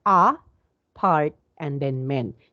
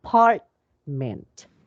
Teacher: in the word apartment we have three syllables and where is the stress so that would be in the part so uh apartment so we do not say ah apartment okay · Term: syllable stress